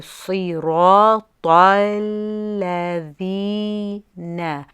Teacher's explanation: when you say sirat, the ta is a heavy, but you're moving onto a lam sakin which is light. So you're going from a heavy ta to a light lam, and people tend to make the mistake of saying tal because you're saying the ta heavy, and so then you say the lam heavy too, just naturally.